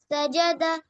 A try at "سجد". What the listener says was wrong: سجدہ میں سین کو صاف ظاہر کرو. سین کا مخرج ظاہر کریے, سین پہ رکیے. آواز نہیں آ رہی ہے سین کی. نو کل بھی یہ مسٹیک آئی تھی, یاد کیوں نہیں کرتے ہو؟